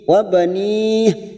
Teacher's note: Wa sahibatihi, hadamir yang berharokat kasrah berdiri 2 harokat, mat silah khosirah, sahibatihi wa banih, wa banih, mat yang bertemu dengan huruf hidup yang dibaca waqaf, mat arid li sukun 4 harokat, kita panjangkan.